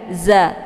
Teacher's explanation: di sini dia hurufnya huruf ujung lidah ya, za. Jadi jangan dibaca fajada, jangan ja za.